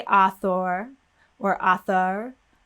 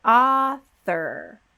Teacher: a lot of these o r endings at the ends of words they're unstressed syllables we completely delete the vowel so the vowel goes away we don't say author or author